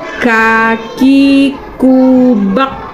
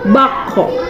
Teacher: Tidak ada pantulan karena itu bukan huruf kolkolah. Kalau macam kof itu kan karena huruf kolkolah jadi dia memantul.